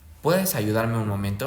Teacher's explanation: Si el mandato, si el mandato se suaviza con forma de pregunta, puede tener entonación, puede tener entonación ascendente al final